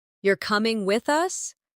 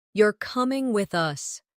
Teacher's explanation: "You're coming with us." Do you hear the difference? The rise in your voice at the end of the question signals uncertainty, while the drop at the end of the statement signals certainty. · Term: intonation